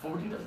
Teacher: in native English, speaking English, we really don't pronounce the final syllable that strongly